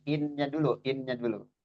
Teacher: jadi innya itu ditahan dulu dilamakan ditahan sama kurang lebih dua harakat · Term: Gunah musyaddadah